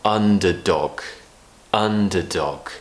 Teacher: so we have a schwa in the middle underdog